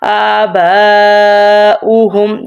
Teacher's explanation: آباؤہم، جیسے اب واو کے اوپر حمزہ ہے، ہم نے واو کو نہیں پڑھا، ہم نے حمزہ کو پڑھا ہے